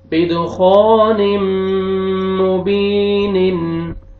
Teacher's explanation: یہاں پہ دیکھیں تنوین کے بعد حروف یرملون میں سے میم ہے، آپ نے ادغام کرنا ہے غنہ کے ساتھ، اور یہ الف سے پہلے فتحہ، الف سے پہلے زبر، آپ نے الف مد ہے، خا کو آپ نے کھینچنا ہے، اور یہ یا جزم سے پہلے زیر ہے، یا مد ہے، با کو آپ نے کھینچنا ہے